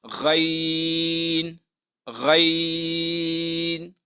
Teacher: غین به موږ د دریو الف په مقدار هغه راکاږو